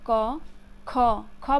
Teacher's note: तो जैसे मैं ख बोल कर देखिए, क बोले, क, ख, ख बोलने में ज़्यादा एनर्जी लग रहा है, ज़्यादा वायु लग रहा है, तो ये हो गया महाप्राण।